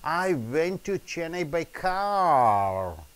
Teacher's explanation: the car is the focus words